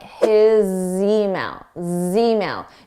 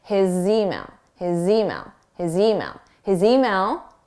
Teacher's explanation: although the spelling is an S it's a z a voiced sound so it's a zed so we can use that to link